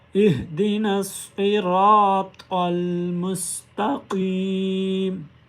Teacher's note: इहदी नस्सी, इहदी नस्सी रातल, रा के ऊपर ज़बर है, साथ में अलिफ है। यहाँ पर रा को एक अलिफ की मिकदार लंबा भी करेंगे। इहदिना सिरातल मुस्तकीम, मुस्तकीम, मुस, सीन को अदा करते हुए सीटी की आवाज़ आनी चाहिए।